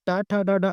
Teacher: टा, ठा, डा, डा आप बोलेंगे तो आपकी जीभ जिस पार्ट में टच कर रही है उसे मूर्धा बोलते हैं